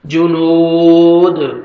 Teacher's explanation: نون کو کھینچنا ہے، اور دال جب سٹاپ کریں گے تو دال حروف قلقلہ جو 5 لیٹرز ہیں، قاف طا با جیم دال، ان میں سے دال ہے، جب یہ ساکن آئیں گے تو ڈبل ساؤنڈ آتا ہے